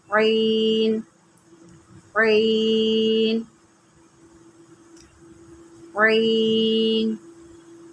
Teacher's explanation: عین جو ہوتا ہے حلق کے درمیان سے نکلتا ہے، اس کو آپ عین نہیں پڑھیں گے، اس کو پڑھیں گے عین۔